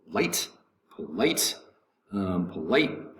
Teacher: the accent is going to be over the second syllable